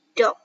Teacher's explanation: bunyi deh dikata dog dihasilkan dengan lidah menyentuh langit-langit